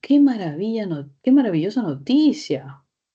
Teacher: No es de puntos suspensivos, no es de respuesta sí o no. Automáticamente tono descendente.